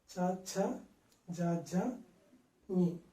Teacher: గాలిని ఆపడానికి ఈ యొక్క నాలుక అంచులు రెండు అంచులను రెండు దంతాలకి పైన టచ్ చేస్తాం. · చ ఛ జ ఝ ఞ ఈ యొక్క అక్షరాలను మనం తాలువు సహాయంతో పలుకుతాం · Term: తాళవ్యంలో